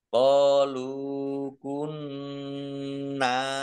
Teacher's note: Nun tasdid dibaca gunah atau dibaca mendengung biar tampak dengungannya maka harus ditahan · Qalu kunna, qaf fathah alif mat tobi'i, lam domah wawu sukun mat tobi'i, masing-masing dibaca panjang 2 harokat. Nunnya nun tasdid dibaca gunnah atau dibaca mendengung. Biar tampak dengungannya maka harus ditahan. Kunna, nun fathah alif mat tobi'i, panjang 2 harokat.